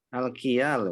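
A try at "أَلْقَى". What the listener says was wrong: alqa. Iya, enggak dibaca alki. Itu bukan ya, tapi iya, huruf illat.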